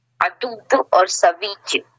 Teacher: وقف بالتشدید میں دیر دو حرکت کی ہوگی، 2 حروف کی ہوگی